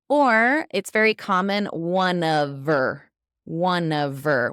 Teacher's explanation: we've dropped the OF completely